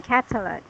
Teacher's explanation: The rising voice should be in this here, first syllable, catalog.